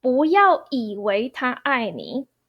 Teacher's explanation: as second tone 不 instead of fourth tone.